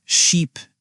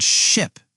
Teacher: The difference is sheep has a long e sound and ship has a short i sound.